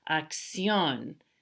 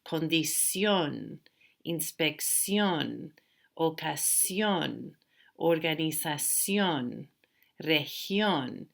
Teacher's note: They end in the letter N. The stress isn't on the second to the last syllable. It's actually on the last syllable.